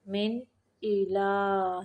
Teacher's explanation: تنوین کو ظاہر کریں گے، اظہار کا قاعدہ ہے